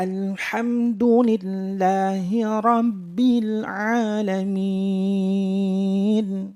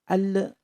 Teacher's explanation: lam itu bukan huruf Qalqalah sehingga tidak boleh dibaca memantul